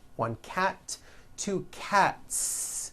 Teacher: cat cat ends with an unvoiced t one cat two cats again the s ending is unvoiced